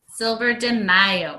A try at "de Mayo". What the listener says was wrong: no, but DE is day in Spanish.